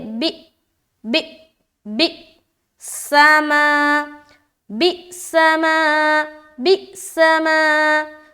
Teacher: ماں میں پورا الف مدہ کریں گے کھینچتے ہوئے